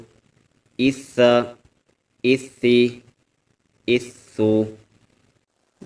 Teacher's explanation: سا کو ادا کرتے ہوئے ہم سیٹی کی آواز نہیں نکالیں گے، بلکہ سا نرمی والے حروف میں سے ہے۔